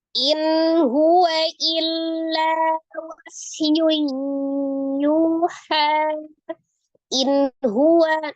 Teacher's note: Jadi keluar dari tenggorokan. Lengkapnya tenggorokan bagian bawah untuk di huruf ha. Jadi maka dibaca dengan jelas. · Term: izhar halki